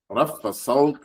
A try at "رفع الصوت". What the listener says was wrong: رفع الصوت. Where's the ayn? رفع الصوت.